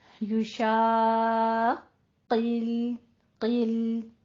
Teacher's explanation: جو آپ کی زبان کے اوپر کوا سا لٹک رہا ہے، جو چمڑا سا لٹک رہا ہوتا ہے وہ نیچے ٹچ ہوگا اور قوف پر نکلتا ہے، لیکن آگے سے لام کو باریک رکھنا ہے.